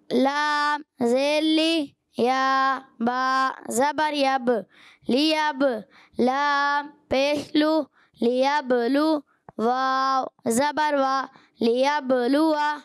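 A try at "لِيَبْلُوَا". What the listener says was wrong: اچھا آپ کے بھی ہونٹ آخر میں کبھی کبھی گول نہیں ہوتے. لیبلوا. ہونٹ گول. اچھا واو کی ادائیگی پیارے بچوں اور مدنی چینل کے نام ہونٹوں کی گولائی سے ہوتی ہے.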